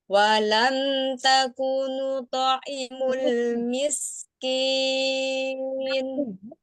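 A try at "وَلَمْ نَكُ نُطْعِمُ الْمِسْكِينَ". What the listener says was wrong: Bukan taku, naku, nun. Walam ya di situ ada mim sukun ketemu dengan nya itu dialirkan dulu. Walam nakunu ta'imul, punya pendek ya. Walam nakunu ta'imul miskin.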